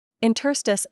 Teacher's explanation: You might not guess that it's accented on the second syllable.